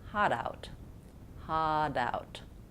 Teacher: I link the two, hot, out. But Americans change the T to more of a D when we link words.